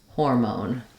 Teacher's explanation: say the o sound so we have a clear o vowel even though the second syllable of moan is unstressed it does have that clear o sound